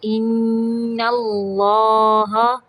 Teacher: ان پہ نون مشدد کا غنہ ہوگا